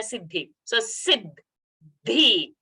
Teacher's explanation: So the first half the is Alpa Prana. The ending sound is a Mahaprana.